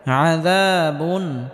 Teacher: মার ব ফি কুলুবিহিম মারাদুন ফাযাদাহুমুল্লাহু মারাদা في قلوبهم مرض فزادهم الله مرضا ولهم عذاب أليم بما كانوا يكذبون ولهم عذاب أليم بما كانوا يكذبون এখানে তানবিনের পরে ইজহারের 6টি হরফ হামজা হা আইন হা গয়েন খ এই 6টি হরফের মধ্যে হামজা আসার কারণে এখানে তানবিনকে স্পষ্ট করে পড়তে হবে। আয়দা বুন, তবে আওয়াজটা হালকা জারি রাখতে হবে কারণ নুন সাকিনে আওয়াজ হালকা জারি থাকবে।